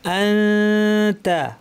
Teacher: তায়ের মাখরাজে জিব্বাকে নিয়ে লাগাবো না, কিন্তু রেডি রাখবো তা বলার জন্য। নাক থেকে চিকন পাতলা গুন্না করবো।